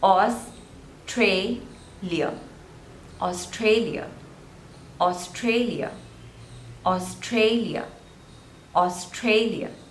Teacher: again three syllables and stress is on the second one